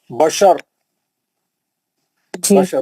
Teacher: زبر رہنے کی وجہ سے موٹا پڑے را کو